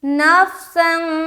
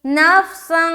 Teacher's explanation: یعنی کہ ناک میں اپنی آواز کو چھپانی ہے. جو نون کا جو ساؤنڈ نکلتا ہے نا تنوین سے، اس کو اپنے ناک میں چھپانا ہے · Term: اخفا کا قاعدہ